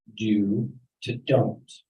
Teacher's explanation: When I press together the words do and not, one word don't is formed. The long oo sound replaced by the long o sound. Do to don't, while the short o sound in not disappears.